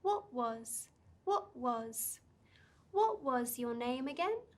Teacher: with this pattern we start with our voice at a medium level then we bring it down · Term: clarification questions